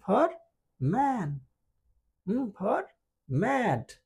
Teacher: এম উচ্চারণের ক্ষেত্রে এই দুইটা ঠোঁট বন্ধ হয়ে যাবে। যেহেতু ঠোঁট বন্ধ হয়ে যাবে এই সাউন্ডটা ক্রিয়েট হবে নাক দিয়ে, এই জন্য এটাকে বলে নাজাল সাউন্ড।